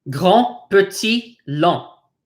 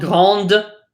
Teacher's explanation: You'll notice all these final consonants are not pronounced. This is not grande, but grand.